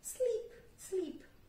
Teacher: Agora, dormir, o verbo dormir, to sleep, sleep, sleep. Com o som do I mesmo, como em igreja, então o som do I longo, I, sleep. Por que eu tô falando isso?